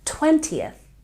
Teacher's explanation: once we get to the tens, we stress the first syllable